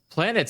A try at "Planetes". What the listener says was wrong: no, it's got an E, so it's the French Planetes. it's not Yeah, so it's planets.